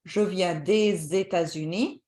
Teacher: I'm not pronouncing the S, but when there is a vowel, you make the linking.